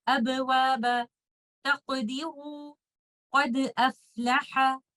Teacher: If the Qalqalah letter is in the middle of a word or at the end of a word and we are not stopping on that word, in that case, we will lightly bounce on the Qalqalah letter and we move on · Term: Qalqalah Sughra